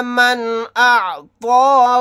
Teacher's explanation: نون کی آواز کو ظاہر کر کے بغیر غنہ کے پڑھیں گے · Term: اظہار حلقی